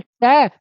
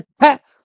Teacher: इसी तरीके से कै फिर ख, तो ख में ज्यादा हवा निकली, जब बोलेंगे ट फिर बोलेंगे ठ, तो ठ में ज्यादा हवा निकली, तो अगर हवा ज्यादा निकली तो वो महाप्राण है।